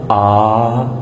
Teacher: حلق میں تھوڑی سی رکاوٹ کے ساتھ.